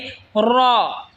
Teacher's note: র জিহ্বার আগার পিঠ তার বরাবর ওপরে তালের সঙ্গে লাগায় উচ্চারণ হবে র